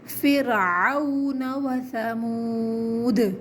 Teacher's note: فرعون وثمود، وسا نہیں بولنا، سا کو نرمی کے ساتھ پڑھنا ہے، زبان دانتوں کے درمیان لے کر آئیں گے، آخر میں قلقلہ کریں گے۔